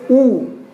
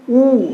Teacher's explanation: इनको बोलने पे हमारा जो होठ है वो सामने आता है और वृत्त का आकार बनाता है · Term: वृत्तमुखी